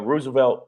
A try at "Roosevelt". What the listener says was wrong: it's Roosevelt, right? The second O is silent. Like Theodore Roosevelt.